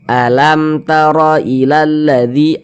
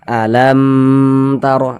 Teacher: saja alam taro ilalladzi alam taro ilalladzi Jangan dibaca alam taro lamnya itu jangan dipanjangkan pendek saja